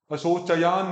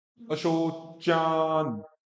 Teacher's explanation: और फिर च और यह तो च, चय नहीं, अशोचयान नहीं, च के बाद में अ नहीं है